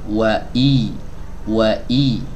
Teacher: berharak kasrah berarti diturunkan lagi nih ya rahang bawahnya i ya kemudian Tengah lidahnya diangkat sedikit untuk menyempurnakan ya kasrahnya